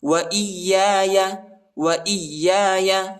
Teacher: حمزہ کو یا کے ساتھ ملائیں گے، ٹھیک ہے، اور یا کو شدت کے ساتھ پڑھنا ہے، اس یا کو زیادہ نہیں کھینچنا ہے